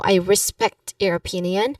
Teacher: pronunciation wise, respect is emphasized.